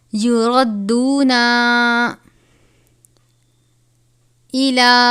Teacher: چھوٹی مد ہے، 3 الف کے برابر اس کی مقدار ہے